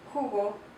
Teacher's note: the letter J, is like a H sound, a little bit more guttural, and it's pronounced jugo.